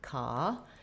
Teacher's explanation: In this word it says k, the K sound. So we have stress on the ka syllable. Letter O says the ah vowel